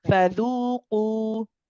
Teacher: make sure that the dhamma is clear and you're circling the lips and saying qu and not saying qo.